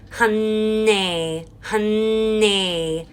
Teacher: I feel air pressure and some actual air is flowing through my nostrils. And because of the n sound, of course, it's going to the front of my shelf right behind the teeth there. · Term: HN